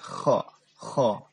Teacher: dia keluar dengan hembusan udara tapi dia kasar terdengarnya ya. Kho kasar, kho.